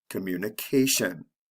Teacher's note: with the tion the stress comes right before the ending so it's the second to the last syllable